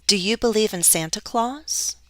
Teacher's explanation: this one has our rising intonation